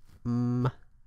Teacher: M, m, is bilabial, and ng, ng, is velar. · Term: syllabic consonants